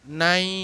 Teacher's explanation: একটা পূর্ণ স্বরধ্বনি আ এবং ইটা হচ্ছে অর্ধ স্বরধ্বনি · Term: দ্বিস্বরধ্বনি